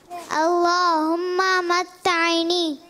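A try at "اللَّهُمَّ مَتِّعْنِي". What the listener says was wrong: तैनी नहीं है, देखें, अल्लाहुम्मा मत्तीनी, तीनी, ठीक है, मत्तीनी। ता के नीचे जेर है, ता ऐन जेर ती, मत्तीनी, ठीक है जी।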